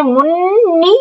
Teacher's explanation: نون میں شد کا اکمل گنہ ہوگا